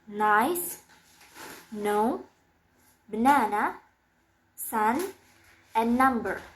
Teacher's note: It's voiced, and the place of articulation is alveolar. The manner of articulation is nasal.